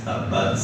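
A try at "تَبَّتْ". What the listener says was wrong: Tapi bukan hanya tabat, bat, keluar nafas aja. Jadi bat turunin lidahnya keluar nafas tuh, bat. Jadi bukan baj, bukan kayak tempe bacem enggak gitu. Tabat, bat.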